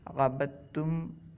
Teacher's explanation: عبدتم میں دال کو تا میں ملایا گیا ہے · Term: مدغم